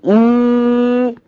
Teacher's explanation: The distance of the tongue from the palate بنسميها close زي E. The tongue is very close to the palate, the roof of the mouth